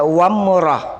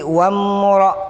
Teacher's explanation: Jangan sampai kita baca wamrah, tapi wamra. Jangan baca wam, tidak ada suara me. Kalau ada suara me berarti itu qalqalah. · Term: Mimnya ini halus